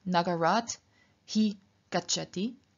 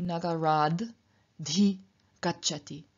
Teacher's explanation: So, for example, we have the sentence from earlier, Nagarat hi gacchati, which changes through Sandhi into Nagarad dhi gacchati. So in front of an H, the T becomes voiced, and the H changes into the corresponding voiced aspirated stop, so into D, and so we have Nagarad dhi gacchati.